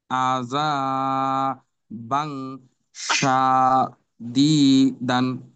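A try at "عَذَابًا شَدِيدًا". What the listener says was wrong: গুন্নাতে কিন্তু সময় উম, পাচ্ছে না। গুন্নাটাকে দীর্ঘ করতে হবে। আযা বাং শাদীদান।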